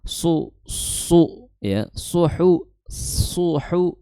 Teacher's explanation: makhraj shad di ujung lidah bertemu dengan gigi seri bawah kemudian disertai mencucu karena apa karena harakatnya dommah